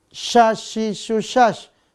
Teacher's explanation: makhrajnya tengah lidah dengan langit langit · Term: huruf syin